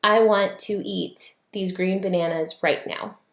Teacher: That is iambic pentameter. It's 5 sets of 2 syllables, 1 stressed, 1 unstressed, and that's iambic pentameter.